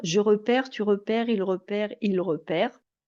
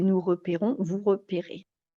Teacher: on a tendance à avoir comme une voyelle plutôt ouverte, repère, quand il y a un E muet. Et repérons, une voyelle fermée, un est fermé, quand il n'y a pas de E muet, en l'occurrence on, ou alors et à la fin. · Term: voyelle ouverte